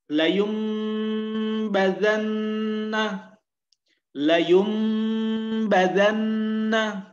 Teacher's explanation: suara nun sukunnya tidak lagi terdengar, tapi berubah menjadi huruf mim. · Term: iqlab